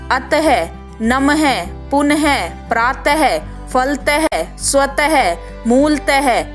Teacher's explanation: अंग है को 2 बिंदी विसर्ग के रूप में प्रयोग किया जाता है। इसके उच्चारण में मुख से ह की ध्वनि निकलती है